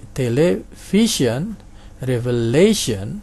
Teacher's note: Nah, itu penekanannya di suku kata kedua dari belakang. Jadi sian ini satu ya, jangan keliru sian dibaca 2 syllable. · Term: penultimate syllable